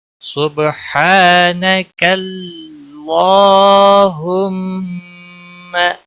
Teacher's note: سبحانک، صبح با پہ کلکلا ہوگا، ہا الف مدہ ہے، ایک الف کے برابر کھینچ کر پڑھیں گے، نہ باقی کسی بھی حرکت والے حرف کو کھینچنا نہیں۔ سبحانک، اور کاف کو اللہ کے لام کے ساتھ ملایا جائے گا۔ سبحانک اللہم، اللہ کے لام کو موٹا پڑھا جائے گا، اس کے اوپر مد اصلی بھی ہے، ایک الف کے برابر کھینچ کر پڑھیں گے۔